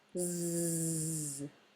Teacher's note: if you try to say Z from the letter Z can you feel that it's starting to vibrate that vibration is what we called voiced